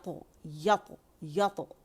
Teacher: لے کر آ رہی ہے, تو پیچھے سے تالو بھی جو ہمارا زبان کی جڑ اوپر ہو جاتی ہے, جگہ تنگ ہو جاتی ہے , وہاں سے ہوا جو آواز لے کر آ رہی ہے